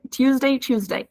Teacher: as you can see the t is pronounced like CH in Irish accent